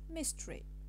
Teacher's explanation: you notice that we have omitted the schwa and this process is called a vowel elision the explanation is · the elision of the schwa in the medial post-tonic syllable